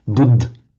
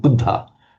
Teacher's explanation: So a final short up is in most circumstances, not all, pronounced as an Hindi speakers and Marathi speakers in their native pronunciation would actually completely omit a final short ah